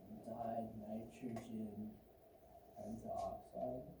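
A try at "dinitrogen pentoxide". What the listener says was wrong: Notice how this should be penta, but we're dropping the A off the penta. So you don't say pentaoxide, you just say pentoxide. It just kind of flows together better. Again, if you put the A, I'm not counting it wrong.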